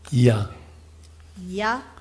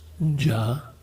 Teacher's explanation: can you feel how you hit your tongue more definitely with ja? Is a definite contact.